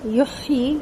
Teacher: کذالک دونوں جگہ کاف بالکل باریک ہوں گے اور ان میں ہمس آئے گا، کذالک، ٹھیک ہے۔ یحیی یا کا پیش مکمل ہونٹ گول کر کے ادا ہوگا اور ہا کے اندر حلق سے آواز آئے گی اور ہمس آئے گا